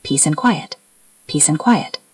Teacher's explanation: Quiet starts with a consonant. So we don't always link that d strongly, but we do link the s and a.